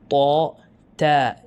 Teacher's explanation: ത എന്ന് ഉച്ചരിക്കുമ്പോൾ നാവ് പരന്നതായിരിക്കും